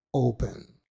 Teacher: el acento está en la primera sílaba